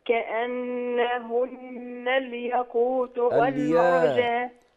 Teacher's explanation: عندنا في نون مشددة تكررت مرتين. كأنهن، لازم أديهم غنة